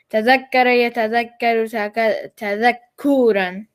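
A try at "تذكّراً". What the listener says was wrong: Except don't make the ku so long. So make it what? Tadakkuran. Tadakkuran.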